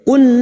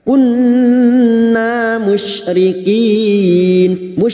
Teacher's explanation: nun yang bertasdid gunna musyaddadah kita dengungkan selama 3 harokat